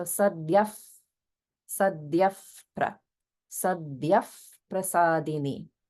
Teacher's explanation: because it's followed by a pa sound in prasadini, it gets pronounced as an if sound. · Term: visarga